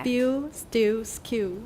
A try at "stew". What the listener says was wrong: So spew, we definitely have the y sound in American. But how about the next word? We don't usually say stew. That sounds pretty funny. We say stew. Stew. And the Brits, they wouldn't say stew either. They would say stew. Stew.